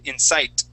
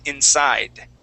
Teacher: let our tongue hit the top of our mouth that's why it has that hard sound with that d